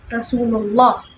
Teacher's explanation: the letter before the name of Allah subhanahu wa ta'ala has dhamma on it, therefore it will be read as heavy or thick